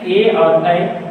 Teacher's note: ए और ऐ का उच्चारण स्थान दो को मिलकर होता है एक कंठ और एक तालु। इसको याद रखना है क्योंकि ये डबल दोनों मिलकर बोलते हैं ए और ऐ, तो कंठ और तालु।